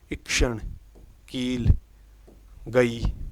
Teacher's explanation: अवृत मुखी मतलब बोलते वक्त हमारा मुख फैलाव के रूप में, होठों के आकार फैलाव के रूप में होता है, न कि गोल रूप में। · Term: बड़ी ई